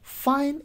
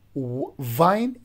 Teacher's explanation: the first one fine is voiceless while the second vine is voiced